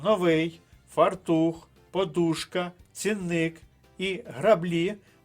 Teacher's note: слова новий фартух подушка цінник і граблі мають наголос на другому складі